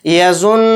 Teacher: تو ہماری جو زبان کی نوک ہے وہ تالو سے اوپر ٹکرا رہی ہے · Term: غنہ